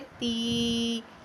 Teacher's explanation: खड़ी हरकत हरूफ़े मद्दा के कायम मुकाम ही होती हैं, यानी जिस तरह हरूफ़े मद्दा को एक अलिफ़ के बराबर लंबा किया जाता है, इसी तरह इनको एक अलिफ़ के बराबर लंबा करके पढ़ेंगे।